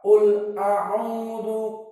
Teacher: lam sakinah dia tidak boleh keluar dari nafas dan tidak boleh panjang karena dia sifatnya jahar dan bukan rokhawah.